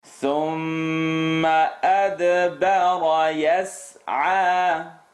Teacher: Light all the way through except the ra.